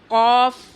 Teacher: زبان کی جڑ جب نرم تالو سے لگے تو اس سے قاف ادا ہوتا ہے